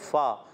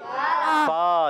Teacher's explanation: फा का मखरज है ऊपर के दांतों के किनारे और नीचे वाले होंठ के तर हिस्से से जब ये किनारे ऊपर वाले दांतों के टच होते हैं तो अदा होता है फा।